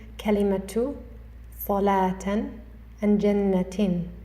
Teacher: When continuing, we read the marbootah with a Ta